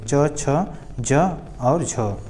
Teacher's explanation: च वर्ग जो है स्पर्श संघर्षी है